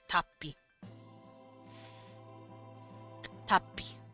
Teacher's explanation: it geminates, so you kind of stop before pronouncing the P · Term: gemination